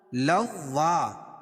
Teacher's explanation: لوا تشدید ہے، واو کے اوپر تشدید ہے، مشدد. تو مشدد والا حرف 2 مرتبہ پڑھا جاتا ہے. مشدد والے حرف سے پہلے وہ حرف مشدد میں ملے گا، پھر مشدد والا حرف خود پڑھا جائے گا.